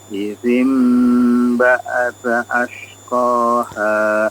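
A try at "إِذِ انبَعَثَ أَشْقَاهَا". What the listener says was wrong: Ainnya diperjelas apa?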